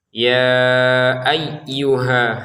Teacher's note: Ya ayyuha, 'ha' itu panjangnya dua ketukan. Jika Anda ingin menghubungkannya ke tashdid, panjangnya akan hilang.